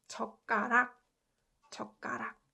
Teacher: So when you try pronouncing this, it's also pronounced 젓가락. It puts more emphasis on 그, and it becomes 그, 쌍기역 sound.